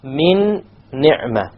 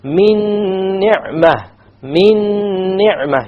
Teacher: You have a silent noon, and I did a ghunna as well because there was an idgham.